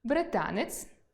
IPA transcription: б р и т а н е ц’